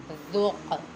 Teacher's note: قاف حروف قلقلہ میں سے ہے، اس میں قلقلہ خوب ظاہر کریں گے کیونکہ یہ قاف ساکن ہے۔ جب حروف قلقلہ ساکن ہو تو ان میں قلقلہ خوب ظاہر ہوتا ہے۔